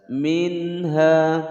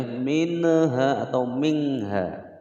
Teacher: Ha ini adalah huruf idhar, maka nun sukunnya ini harus dibaca jelas. Minha, tidak boleh minha atau mingha.